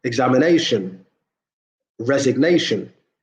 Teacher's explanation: again stress on the penultimate syllable